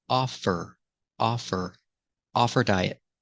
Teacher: the H is silent because her is not a stressed word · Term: silent h